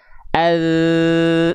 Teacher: Ini adalah persentuhan antara ujung lidah ke ujung gigi sari atas kita. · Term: huruf zal